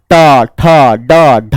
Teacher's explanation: इसमें जीभ भीतर जा रही है, इसे मूर्धा कहते हैं।